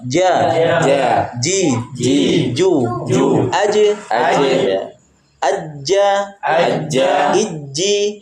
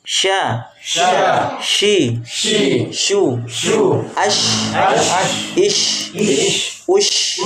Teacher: Nah itu tiga huruf itu keluar dari tengah lidah